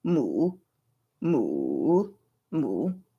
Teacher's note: This is the third tone in Mandarin, in which you're going to vocal fry, basically. And then you're going to come up just a little bit.